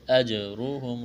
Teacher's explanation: را کو موٹا کرنا ہے، پیش ہے